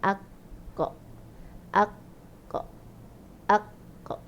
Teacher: So masa kita matikan dia, kita kena angkat pangkal lidah. Lantunkan daripada pangkal lidah bila terlepas. So daripada pangkal lidah tu huruf dia akan berbunyi tebal. Huruf berbunyi tebal dia akan berbunyi o. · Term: isti'la